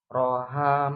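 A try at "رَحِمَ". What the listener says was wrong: Bukan ha di bawah. Hi. Hi. Rohi.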